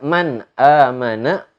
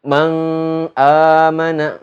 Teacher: harus dibaca secara jelas ketika nun mati tersebut bertemu dengan huruf hamzah Man aman enggak boleh di baca manga amanah enggak boleh Enggak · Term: izhar